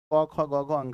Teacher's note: क वर्ग के जितने भी चीज हैं वो कंठ से बोलते हैं